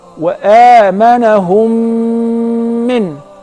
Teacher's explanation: That is the letter Mim. So if the first Mim is non-vowel or Sakinah, followed by a voweled Mim, so I will merge the first in the letter and I will pronounce them as one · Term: Al-Mim As-Sakinah